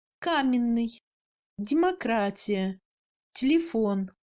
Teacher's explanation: Dans les autres syllabes atones provoquant le second degré de réduction, après une consonne qui est devenue molle, le y est également réduit à un e muet français.